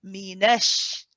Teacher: you want to try and keep the noon with the fatha light